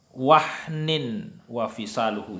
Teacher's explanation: tanwin kasratain bertemu dengan waw, maka dibaca berdengung dan dilebur. Wahniu itu didengungkan, dilebur dan didengungkan. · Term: idgham bigunna